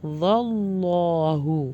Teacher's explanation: اللہ کا نام جلالہ ہے تو اس کو موٹا کر کے پڑھیں گے